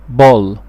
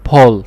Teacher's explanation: مفيش البي اللي الدايره بتاعتها لتحت مفيش فيها هوا، انما البي الدايره بتاعتها لفوق بيكون فيها هوا